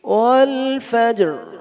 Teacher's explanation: جیم پر قلقلہ بھی کرنا ہے، را کو موٹا بھی چھوڑنا ہے